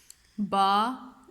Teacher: دونوں ہونٹوں کو ملائیں گے آپ تو پھر با ادا ہوگا